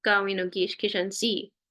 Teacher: Now, I'm gonna add this here because in VTIs, even though a lot of times in the dialect in your area, that N is so nasalized that it almost isn't heard at all. I'm gonna make it really tiny like that because you might hear it like Ogish Gizanzin, Ogish Gizanzin.